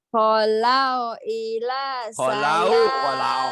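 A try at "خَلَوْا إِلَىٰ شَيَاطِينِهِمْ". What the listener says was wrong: Kholau, jangan holau.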